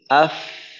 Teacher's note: আওয়াজটা কিন্তু সুন্দর মতো চালু থাকে, আওয়াজটার মাখরাজে যাওয়ার সাথে সাথে বন্ধ হয়ে যায় না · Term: রিখওয়ার